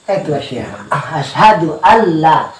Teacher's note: Memang hilang semata-mata nun tuh. Bahkan tidak terdengar huruf nun sama sekali. Dimasukkan.